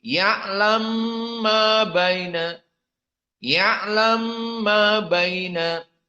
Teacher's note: Maka diidghamkan ya'lamu mim yang dhammah kepada mim yang mutaharrik setelahnya ma. Maka mim yang pertama masuk kepada mim yang kedua, dan itulah idgham al-kabir.